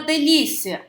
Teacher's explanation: Eu tenho aqui a semivogal I mais a vogal A. Indo do mais fraco para o mais forte, eu tenho um ditongo crescente.